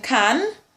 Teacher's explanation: we have the velar plosive sound